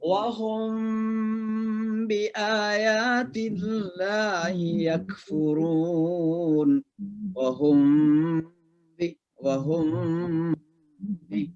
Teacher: tidak terlalu dimasukkan suara mim ke ba, tapi kayak samar-samar di bibir kita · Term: ikhfa syafawi